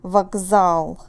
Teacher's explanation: So z forces k to become more like g.